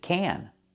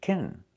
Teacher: Sometimes this word is stressed, and we pronounce it can. Sometimes it's not stressed, and we pronounce it kin.